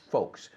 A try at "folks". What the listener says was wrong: la L no se pronuncia.